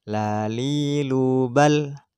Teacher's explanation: Artinya lam ketika dimatikan tidak mantul.